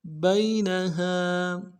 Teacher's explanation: با کو یا کے ساتھ ملانا ہے، یا لین ہے، بغیر کھینچے پڑیں گے ، نون کو نرم سے ادا کریں گے، ہا کے ساتھ